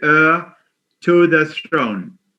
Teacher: It sounds like AIR, but it's pronounced HEIR. The H is silent.